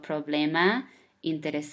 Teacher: the stress of the word is the second syllable from the end